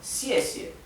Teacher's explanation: la primera sílaba tiene el tono que cae, que es el cuarto tono